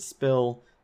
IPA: 'spɪl